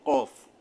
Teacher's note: জিহ্বার গোড়ার থেকে মোটা ভাবে আদায় হবে